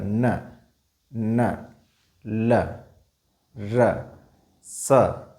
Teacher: हमारी जीवा आगे वाले दांतों से ठीक ऊपर वाला जो भाग है उसको स्पर्श करता है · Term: वृत्तस्य वर्ण